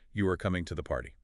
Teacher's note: They point out incorrect structures like just raising your voice at the end of a statement